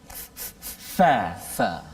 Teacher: antara perut bibir bawah dengan hujung gigi kacip tengah atas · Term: huruf fa